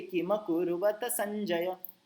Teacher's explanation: last का देखिए, किमकुर्वत संजय, continue एक के बाद एक बोल दिया मैंने, कहीं रुका नहीं